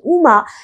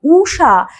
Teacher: হ্রস্ব উ দীর্ঘ উ, দেখো একবার যখন আমি বলছি উমা তখন হ্রস্ব উ ব্যবহার হচ্ছে, আমি যখন বলছি উষা তখন উটাতে আবার চাপ পড়ছে